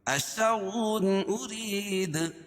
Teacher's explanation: اشر ارید، اشر رائے مشددہ کے اوپر زبر یا پیش ہو تو اس کو پور پڑھیں گے. اور تنوین کے بعد حروف حلقی کے 6 حرفوں میں سے حمزہ ہے تو یہاں اظہار حلقی ہوگا، اس کو ظاہر کر کے پڑھیں گے